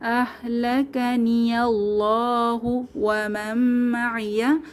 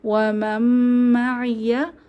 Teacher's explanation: নুন সাকিনের পরে মিম এসেছে, তাহলে ঈদগম ও গুন্নাহ সহকারে মিলিয়ে পড়ব।